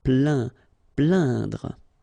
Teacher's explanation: when you combine this A, I, N, you will get the sound un. So really, this nasal sound in your nose.